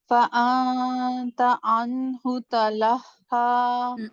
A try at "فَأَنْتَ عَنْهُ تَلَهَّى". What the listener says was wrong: اور زیادہ سیدھی زبان کو اور سیدھا کریں تاکہ یہ موٹی آواز نہ آئے. فَأَنْتَ عَنْهُ تَلَهَّى.